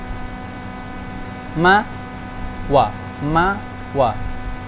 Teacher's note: Mim sukun dan mim dan waw itu makhrajnya sama, yaitu syafatan. Ma wa di bibir dua-duanya.